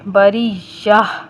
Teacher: آگے گولتا ہے، گولتا وقف کی حالت میں ہمیشہ ہائے ساکنہ سے بدل کر پڑھی جاتی ہے، یعنی کہ جب ہم اس کے اوپر ساکن کریں گے، اس گولتا کے اوپر، تو ہا کی آواز نکال کر ہم ادھر وقف کریں گے۔